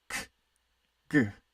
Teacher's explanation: Velar, the back of the tongue, close to the back of your mouth.